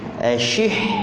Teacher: Huruf shin. Ashih, huruf ha pertengahan kerongkong. Jangan baca dengan ha. Ashihha. Ini sabdu ni tuan-tuan, bacaan dia tidak boleh kita putuskan.